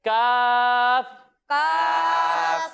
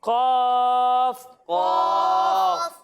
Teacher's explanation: جب ہم قاف کی ادائیگی کریں گے تو آپ کو یہ معلوم ہے کہ قاف بھی حروف مستعلیہ میں سے ہے تو اسے ہم موٹا کر کر پڑھیں گے